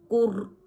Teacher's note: یہاں پر بھی را ساکن کا قاعدہ ہو رہا ہے، را ساکن اس سے پہلے پیش، ایسی را موٹی پڑھی جائے گی